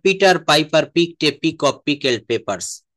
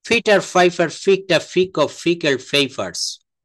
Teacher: পিটাকে বলতে হচ্ছে ফ, নট প। একটা হচ্ছে অ্যাসপিরিয়েটেড সাউন্ড আর একটা হচ্ছে আনএসপিরিয়েটেড সাউন্ড।